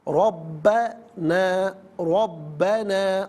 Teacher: را پر زبر ہے، را پر زبر یا پیش ہو تو پر پڑھتے ہیں، زیر ہو تو باریک پڑھتے ہیں، یہاں پر کر کے پڑھا جائے گا۔